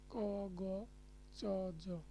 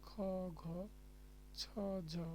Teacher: অল্প প্রাণ হচ্ছে বাতাস কম থাকে, মহাপ্রাণে বাতাসের আধিক্য থাকে, মানে বেশি থাকে।